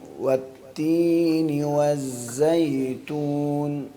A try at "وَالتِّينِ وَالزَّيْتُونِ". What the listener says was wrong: واؤ بھی ہونٹ گول کر کے پڑھتے ہیں مکمل، ہونٹوں کو پورا مکمل کر کے نرمی کے ساتھ. والتینی نہیں، ہونٹ کو اندر نہیں لے کے جائیں، دونوں ہونٹوں کو گول کر کے، قاری صاحب جیسے وا یوں.